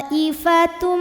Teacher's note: fathah hamzahnya i pada kata thoifatun jadi ada dalam satu kata maka tho panjangkan boleh empat boleh lima harakat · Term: mad wajib muttasil